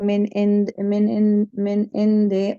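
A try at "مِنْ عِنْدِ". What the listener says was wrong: मिन इंदी में देखिए, दाल के बाद या है, इंदी आपने पढ़ा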